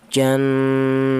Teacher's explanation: Adapun suara dengung ini yaitu panjangnya dua harokat atau dua ketukan. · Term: gunnah